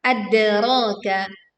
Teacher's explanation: Pantulkan dal sukun dengan suara yang kuat. Ra panjang 2 harokat.